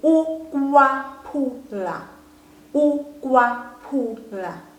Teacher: The second U there has now changed to a W.